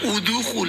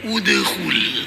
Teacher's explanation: Artinya qalqalah itu setelah huruf itu mati, setelah huruf itu sukun muncul suara baru. Bukan suara hurufnya tapi suara huruf lain yaitu huruf mad itu.